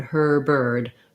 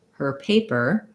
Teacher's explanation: You can hear how her is longer, paper, that is just short and light. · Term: stressed R